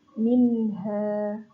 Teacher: Nun mati bertemu dengan ha. Dia dibaca jelas, minha. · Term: idhar